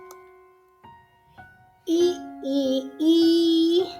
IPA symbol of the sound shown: i: